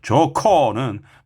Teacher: 히읗과 기역이 합쳐서 키읔으로 좋고 축약되면 하나 줄어드는 겁니다. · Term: 거센 소리